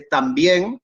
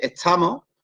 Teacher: la T de también y la T de estamos no son iguales. La segunda es más larga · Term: consonantes geminadas